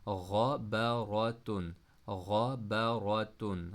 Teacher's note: غائن اور را دونوں کو موٹا پڑھا